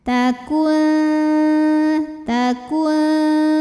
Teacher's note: Bunyi dengungnya atau aliran suara yang masuk hidung masih sedikit aliran suara dari mulut masih banyak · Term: ikhfa aqrab